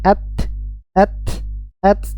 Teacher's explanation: Ta ini memiliki sifat syiddah, tertahannya aliran suara at, tapi nafasnya mengalir.